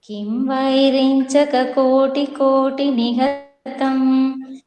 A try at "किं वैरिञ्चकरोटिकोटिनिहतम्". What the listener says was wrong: कोटि இல்லமா கரோடி